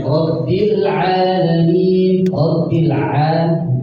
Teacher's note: rabbil alamin itu menggunakan huruf ain, hati-hati jangan jadi huruf hamzah